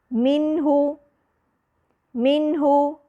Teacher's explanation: अब यहां पर मैंने बिल्कुल गुन्ना को माइनस नहीं किया लेकिन मैंने यहां इजाफे गुन्ना भी नहीं किया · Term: उन्ना नाकस